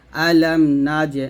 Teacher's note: সাকিন আসলে কলকলা করতে হবে, তো নাজ কলকলা করতে হবে।